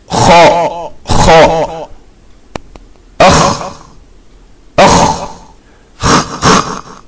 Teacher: In the last, it is kha, which has a dot on its head. This is pronounced from the front of the throat.